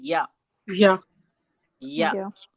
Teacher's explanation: जबान के बीच और उसके मुकाबिल ऊपर के तालू से या अदा होता है। · زبان کے بیچ اور اس کے مقابل اوپر کے تالو سے یا ادا ہوتا ہے